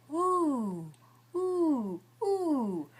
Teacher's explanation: That can't possibly be a schwa, because I'm using a lot of tension.